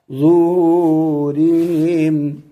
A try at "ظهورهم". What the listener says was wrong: نہیں نہیں ظهور اوپر دیکھو نا سیدھی نہ آئے ری را باریک پڑھو ظهورهم